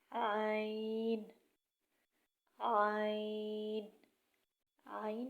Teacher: عین کی آواز گلے سے نکلے گی اور جو ہے جیسے بلغم باہر کی طرف نکالتے ہیں اسی طرح زور لگا کر عین کی آواز نکالیں۔